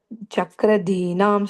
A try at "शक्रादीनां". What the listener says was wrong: Then the first line again, the Shah sound. The first time you said it correct, it's Shah. Shakradinam. Shakra refers to Indra.